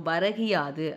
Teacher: குறுமை கூட்டல் இயல் கூட்டல் இகரம். அதாவது முதல் சொல்லின் இறுதியில் உள்ள கூ என்னும் எழுத்து கீ என்று ஒலிக்கிறது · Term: குற்றியல் இகரம்